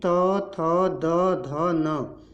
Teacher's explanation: दंत से जो भी वर्ण आपके उच्चारित होते हैं वो हैं त वर्ग के